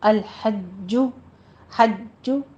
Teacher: الحج حا وسط حلق سے نکالنا ہے، لام کے اوپر قلقلہ نہیں کرنا، جیم کے اوپر تشدید ہے، آگے ہونٹ گول کر لیجئے سختی سے ادا کرتے ہوئے